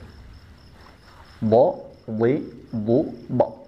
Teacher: dari segi terangkatnya pangkal lidah dia bersifat isti'la. Pangkal lidahnya diangkat, dinaikkan ke langit-langit mulut.